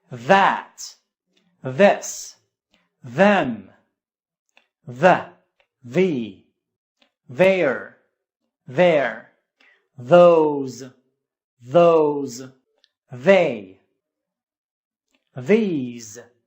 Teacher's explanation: voiced th sound at the beginning of the word